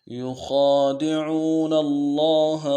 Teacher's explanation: یخادعون اللہ والذین آمنوا يخادعون الله والذين آمنوا يخادعون الله والذين آمنوا يخادعون الله خا کو موٹا کرنا ہے، کھینچا ایک الف دار میں، عو عین واو پیش عو، عین کو واضح کرنا ہے، گہرائی سے ادا کرنا ہے، اور واو مدہ ہے، ایک الف دار میں کھینچنا ہے۔